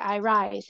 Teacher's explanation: they're both stressed syllables it doesn't seem like one is an unstressed syllable